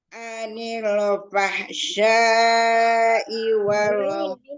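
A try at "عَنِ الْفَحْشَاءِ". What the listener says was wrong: Bukan anil, hanya pendek. Anil, jangan dinaikkan, jangan dinabar.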